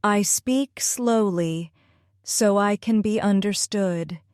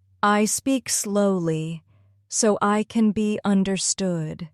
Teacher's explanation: Feel the pause after slowly. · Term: thought groups